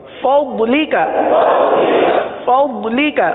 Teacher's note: نہ اس کو ضاد پڑھیں گے نہ اس کو دواد پڑھیں گے بلکہ ضاد پڑھیں گے. ضاد زبان کی کروٹ اوپر کے داڑوں کی جڑ سے یہ ضاد کی ادائیگی ہوتی ہے